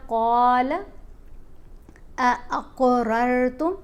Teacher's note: تو یہاں ہم نے پڑھا قال اقررتم، قاف کے اوپر ہم نے کلکلا کرنا ہے، قاف کو موٹا بھی پڑھنا ہے اور کلکلا بھی کرنا ہے۔ کلکلا مطلب اس کی آواز کو تھوڑا سا ہلا کر پڑھا جائے گا۔